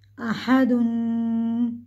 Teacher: हमज़ा ज़बर आ, हा ज़बर हा, आहा, दाल दो पेश दुन, दो पेश की तनवीन है, इसको भी हम गुन्ने के साथ पढ़ेंगे।